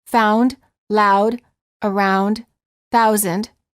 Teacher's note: house for the ow sound the lips are not rounded but as you move toward the second part the oo the lips begin to close and become more tense the tongue moves from a relaxed low position to a high